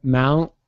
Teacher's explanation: Because you see, I think in my opinion, the clearest example of a glottal stop in American English is the T at the end of a word, which is not really released, but held instead